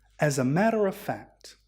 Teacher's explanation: because the word as ends with a consonant and followed by a a vowel we can connect it as a CV rule so as a becomes esse the next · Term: connected speech